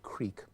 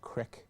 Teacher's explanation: You go from E to I, as in we have the word creek, but it's often pronounced crick.